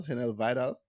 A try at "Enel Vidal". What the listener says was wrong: It's Enel Vidal. So the H is silent.